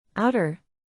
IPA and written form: ˈaʊ.tər (Outer)